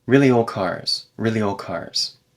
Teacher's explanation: If I say this quickly, it might be old cars without any D sound at all. But if I speak it a little bit more carefully, there's a very reduced D sound.